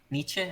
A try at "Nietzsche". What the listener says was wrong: It's more of a sh than a ch.